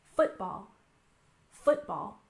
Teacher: We put the stress on the first syllable, football.